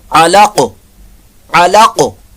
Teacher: یہاں پر وقف کی صورت میں قاف ساکن ہو جائے گی